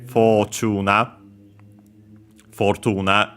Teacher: notice again the or uh sounds that become simply the long vowel o